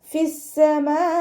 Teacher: മദ് വാജിബ് മുത്തസിലാണ്. 4 or 5 count നിർബന്ധമായിട്ടും നീട്ടാൻ ശ്രദ്ധിക്കുക.